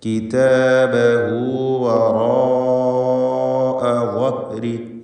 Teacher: വറാഅ ഇതിലുള്ള ദീർഘം മദ് മുത്തസിൽ വാജിബാണ്. നിർബന്ധമായും അലിഫിനെ 4-5 ഹറക്കത്തിൻ്റെ അളവിൽ ദീർഘിപ്പിക്കണം